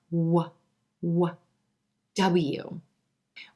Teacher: Our two lips round out away from the teeth for w, w, W.